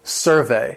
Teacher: If talking about the noun, the stress is on the first syllable.